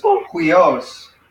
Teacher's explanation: we got the accent on the last syllable